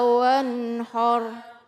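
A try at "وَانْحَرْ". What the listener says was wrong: Ya, yang wanhar, ha dulu. Ha dibuka dulu baru har. Jangan wanhar ya. Karena dia siap-siap mengucapkan ro, jadi dia udah monyong duluan har ya. Wanhar.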